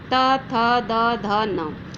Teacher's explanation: जब हम इनका उच्चारण करते हैं त वर्ग के वर्णों का तो हमारी जिह्वा दांतों से टकराती है, इसलिए इसको दंतय कहा जाता है।